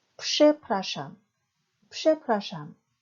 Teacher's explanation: 쓸 때는 프, 즈로 쓰지만 발음은 psh입니다. 그래서 przepraszam 뒤에서 두 번째 모음인 프라의 강세가 있습니다. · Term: 무성음화 현상